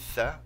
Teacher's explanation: تلاحظ انه يعني مقدمه اللسان تخرج من بين الاسنان